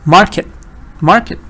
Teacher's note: stress is on MAR